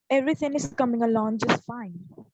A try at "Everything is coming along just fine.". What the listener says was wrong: Timing gone. Do it again. From the gloat. Do it from the glottal sound.